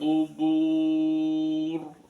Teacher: diakhiri dengan ro yang dipaksakan berharakat sukun maka rnya dibaca ro tafkhim